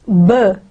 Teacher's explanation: the sound burr is pronounced with the closed lips and then the air is released so there is a friction in the airflow so it is